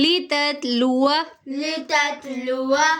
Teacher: آپ کلکلا نہیں کریں گے، ٹھیک ہے، تو اس کو کلکلا بھی نہیں کریں گے، اور دیکھیں آگے واو کے اوپر زبر ہے، اس کو زبر ہی پڑھیں گے، آگے جو الف آ رہا ہے اس کو لمبا نہیں کریں گے